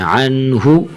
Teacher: عنہ زیادہ نہیں کھینچنا، یہ پیش ہے، اسے ہلکا سا کھینچتے ہیں